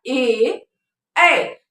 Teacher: स्वर कंठ से निकलती है और वो तालु में आके टकराती है, तभी हम ए और ऐ बोल पाते हैं।